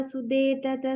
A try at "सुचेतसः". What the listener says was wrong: Suche, cha sound, suchetasas.